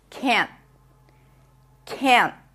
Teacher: The t after an n at the end of a word is usually a held t, and especially after an n, it almost feels like you are just stopping the n abruptly.